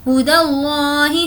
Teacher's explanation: لفظ اللہ سے پہلے زبر ہے اس لیے لفظ اللہ کو ہم پور پڑھیں گے